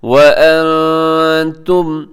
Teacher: یہاں نون ساکن کے بعد تا ہے تو یہاں اخفا کیجیے گا، آواز کو ناک میں چھپائیے گا۔